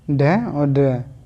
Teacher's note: उत्थिष्ट व्यंजन में उच्चारण जीभ मूर्धा का स्पर्श करके तेजी से होता है